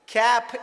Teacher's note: cap is ending in p sound p is unvoiced consonant